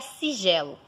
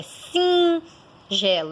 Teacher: Ele apenas está ali para sinalizar que não é sigelo, é singelo. Então, esse I, ele é nasalizado.